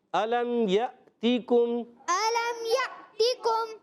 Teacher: عین کی آواز نہیں ہے، جھٹکا آئے گا حمزہ.